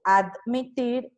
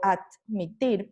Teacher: Tengo admitir y admitir, sí, aquí de pronto sí se escucha un poquito, pero es lo mismo. Una dental sonora oclusiva pasa a ser sorda.